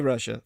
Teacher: when we say russia the double s is pronounced sh